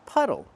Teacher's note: Use the short uh sound like cup and up. It's relaxed and closed.